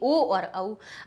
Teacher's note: ओ औ कहां से निकला हमारा, कंठ और ओष्ठ से